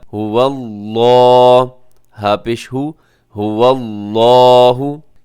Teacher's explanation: لفظ اللہ کو یہاں پہ موٹا پڑھا جائے گا کیونکہ لفظ اللہ کے لام سے پہلے واو کے اوپر زبر ہے، تو اس صورت میں یہ موٹا پڑھا جائے گا۔